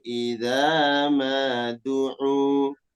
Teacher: Du'u itu lebih 2 harakat.